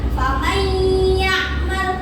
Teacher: Jadi bacanya adalah faman ya'mal. Nun sukunnya dimasukkan ke huruf selanjutnya ke ya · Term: idgham biguna